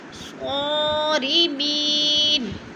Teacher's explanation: اور صاد کو پر پڑھا جائے گا، صاد کے اوپر کھڑی زبر ہے، تھوڑا سا کھینچ کر پڑھیں گے۔